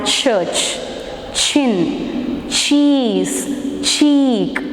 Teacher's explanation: So t is a plosive sound, but when it becomes an affricate sound ch, the release is very slow.